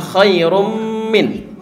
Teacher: mimnya keluar dari mulut dan dari hidung. Gunnahnya sementara gunnahnya keluar dari hidung.